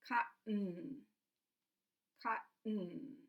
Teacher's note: the air is all coming out of my nose. So these two things, the release of air and the blocking, your tongue is acting like a door. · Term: glottal stop